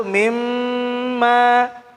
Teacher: Mimma, mim tahan dulu. Mimma. Ya, karena ada tasydid. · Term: mim tasydid